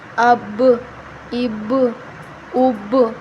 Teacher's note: قلقلہ کر رہے ہیں، مطلب آواز با کی پلٹ کے آ رہی ہے